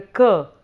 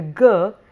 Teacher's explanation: in the sound cur there is first an element of touch followed by a sound whereas in the g there is first an element of sound followed by a touch